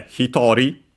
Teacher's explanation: hitori, accent on the to, 1 person.